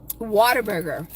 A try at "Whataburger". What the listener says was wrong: Whataburger, not water.